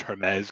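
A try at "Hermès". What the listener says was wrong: you don't pronounce the H, bro. It's Hermes. It's not Hermes. There's no H. Hermes.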